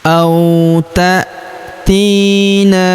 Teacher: Huruf ti kita panjangkan dua harakat karena terdapat ya sukun di depannya